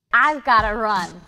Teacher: how the music or that intonation Falls throughout the statement and all the words and the phrase are linked together with no pause